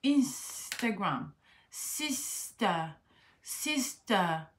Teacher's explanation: dans le cas où le T se trouve après une consonne unvoiced, non voisée, vous êtes dans l'obligation de prononcer le T.